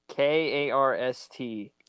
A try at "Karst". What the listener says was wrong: The PH is silent.